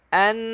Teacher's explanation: nun yang bersabdu, wajibal gunnah, wajib dengung.